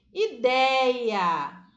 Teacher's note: o dei é a sílaba mais forte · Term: sílaba tônica